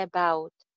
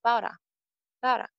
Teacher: About ka second syllable stressed hai about. So it becomes bara.